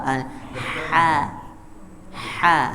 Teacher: Jadi kalau kha itu kan ada getarannya. Kalau ha tidak ada getarannya.